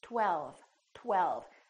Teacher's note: first there was a tongue t touching behind my upper teeth and then we round our lips for the W and then the tongue goes up again for the L LL